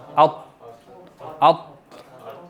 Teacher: तो मोटा करने के साथ ना आपके ये, जब आप अत की आवाज़ निकालेंगे ना तो आपकी ज़बान थोड़ी सी ऊपर जाके आप समझें कि होंठ थोड़े से यहाँ से फूल भी जाते हैं, अत, ठीक है। ज़बान आपकी थोड़ी सी मूव करके दांतों के पीछे वाली साइड पे लगेगी